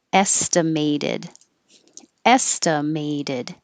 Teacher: You'll hear the may because it's secondary stress. You'll hear the A sound.